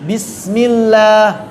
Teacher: Bismillah. Bismillah harusnya dialirkan rakhawahnya.